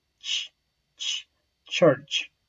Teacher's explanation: The place of articulation is palato-alveolar. The manner of articulation is affricative.